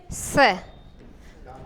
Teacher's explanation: इसका स्पर्श करेंगे तो जीभ कहाँ स्पर्श होगी? दांतों से। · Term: दंत्य